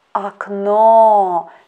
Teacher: we should pay attention to the stress in this word aknow second letter o is under the stress that's why first letter o we pronounce as ah